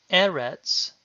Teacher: note that Eretz is stressed on the first syllable